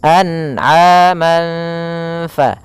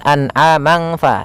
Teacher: samarkan suara tanwinnya atau suara nunnya. Kalau di sini tanwin berarti samarkan kepada huruf fa. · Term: bacaan ikhfa